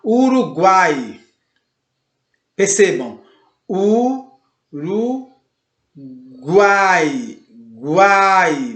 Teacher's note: começa com um mais discreto, passa para um A mais aberto, mais forte, mais presente e volta para um I mais discreto. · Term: tritongo